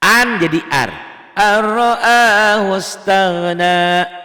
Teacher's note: Diidghamkan tidak disertai dengan dengung. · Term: idgham bila gunnah